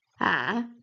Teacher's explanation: Third tone you go low and then rise again.